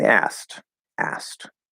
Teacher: It's a little difficult to say. So if we're speaking normally and we don't need to enunciate for whatever reason, we're probably going to drop the middle sound.